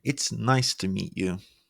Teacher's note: An upward pitch, which makes you sound more cheerful.